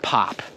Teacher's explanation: the p in the beginning of pop is just as strong as the p in the end of pop